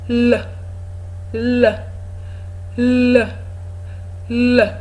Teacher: the tip of the tongue is touching the alveolar Ridge which is that bump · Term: LA sound, L sound